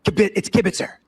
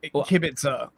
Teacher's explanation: you stress the middle syllable slightly more